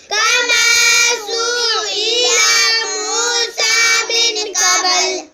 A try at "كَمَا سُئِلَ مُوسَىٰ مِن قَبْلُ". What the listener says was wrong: کسی بھی حرف کا ہم نے لمبا نہیں کرنا. سو الا پڑھنا, سین پہ سو, حمزہ زیر ای, سو ای, لام زبر لا, سو الا, سو الا.